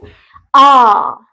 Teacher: ऐसे स्वर जिनका उच्चारण करते समय हमारा जो मुख द्वार है, मुंह का जो हमारा द्वार है, वो लगभग पूरा खुला रहता है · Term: विवृत स्वर